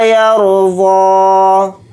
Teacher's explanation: را کو یہاں پر موٹا پڑھیں گے کیونکہ را ساکنہ سے پہلے زبر آ رہا ہے